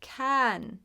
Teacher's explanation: The IPA will show you this symbol for the short A, just like cat, ah. But the tricky part is when paired with N, it goes more into the nose. So it's not cat, can. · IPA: /ˈkæn/